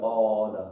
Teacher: अलिफ बगैर झटके के अदा होता है